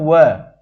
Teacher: दंतोष्ठ जो दांत और नीचे का ओठ जब छूती है तो आप उसे क्या कहते हैं? दंतोष्ठ वर्ण।